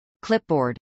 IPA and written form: klˈɪpbˌɔːrd (clipboard)